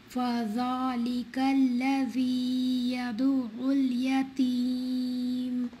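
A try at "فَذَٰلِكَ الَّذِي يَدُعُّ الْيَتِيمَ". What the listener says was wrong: الذي in ayah 1 and 2 longer than 2. So make it shorter little. This is longer than 2 counts. فذا, this is heavy فا and ذال. It must be فذلك.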